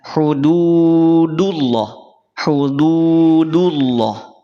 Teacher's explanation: hududullah tidak dibaca tebal hati-hati jangan sampai sudah terangkat lisan kita pada saat mengucapin Dal pangkal lidah kita tidak terangkat · Jadi dalnya jangan sampai terangkat. Mungkin tidak terasa ataupun mungkin tidak begitu nampak perbedaan karena dia berharokat dhammah.